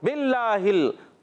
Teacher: बिल्ला में अल्लाह पाक के लाम से पहले जेर आ रही है, इसलिए अल्लाह पाक का लाम बारीक पढ़ेंगे.